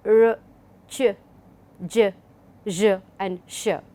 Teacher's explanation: These are the ones which are known as palatals or alveopalatal sounds.